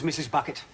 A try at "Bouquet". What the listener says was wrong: It's bouquet, Vicar. It's bouquet. Bouquet. The accent on the second syllable.